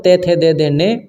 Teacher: जो आपका त वर्ग है त आपका दंत से उच्चारित होता